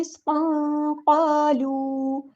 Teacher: قاف کو پورا ادا کرنا ہے، ہیوی لیٹر ہے اور وہاں مد آ گیا تو الف کے برابر لمبا کرنا ہے.